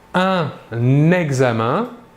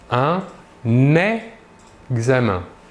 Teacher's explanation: Un exemple, un examen, ici un est un article, la dernière lettre est N et la première lettre du mot qui le suit est une voyelle. Ici, nous réaliserons donc la liaison entre le N et le E